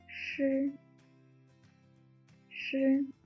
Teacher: The pronunciation of sh is similar to sh from shape, but the Chinese initial consonant sh should be pronounced by warping your tongue more. Sh, sh. When you pronounce sh, Hold up the tip of your tongue, but leave a narrow slit to allow the airflow comes out from it.